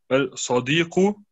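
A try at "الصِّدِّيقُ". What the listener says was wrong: Hier musst du Shadda machen.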